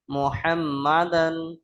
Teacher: মিমের উপর তাসদীদ, গুণনা করা ওয়াজিব, গুণনা করবেন।